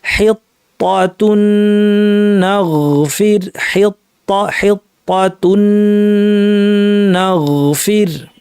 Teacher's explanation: এখানে তানউইনের পর নুন আসছে, তানউইনের পর নুন, তানউইন মানে আসলে নুন সাকিন, তাহলে দুইটা নুন একসাথ করে আমরা তাসদিদ যুক্ত একটি নুন বানিয়ে পড়বো, গুন্নাটাকে লম্বা করে দেবো, কারণ এটা হচ্ছে গুন্না সহ।